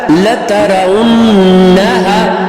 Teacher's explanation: چشمی ہا ہے سینے سے نکلنے والی